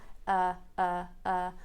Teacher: the tongue is in the center very relaxed everything is relaxed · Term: schwa